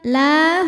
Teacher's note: karena ada alif didahului harokat fathah, maka huruf lam panjang dua harokat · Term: matobi'i dhahiri